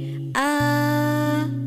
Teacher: A itu tetap terbuka sampai di pengujung huruf